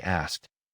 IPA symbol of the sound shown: t